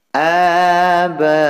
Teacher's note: ada huruf mad yang berupa alif bertemu hamzah dalam satu kalimat. Ini hukum bacaan mad wajib muttasil, panjangnya 5 harokat.